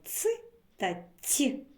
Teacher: так м'який вимовимо ц та ть довго протягувати їх не виходить під час їх вимови повітря зустрічає перешкоду кінчик язика за нижніми зубами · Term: приголосний